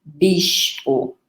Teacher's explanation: Veja que houve queda de um segmento no meio, nós chamamos síncope, ficou algo como bispo, em que o P acaba se sonorizando para B, bispo